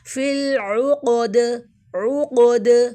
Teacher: عین کو ہم واضح کریں گے، دال کو وقف کی صورت میں ساکن دیں گے اور کلکلا کریں گے